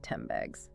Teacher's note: In rapid speech, it often sounds like 10 bags. Because the N sound changes to an M sound to get ready for the B's that follows it. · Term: assimilation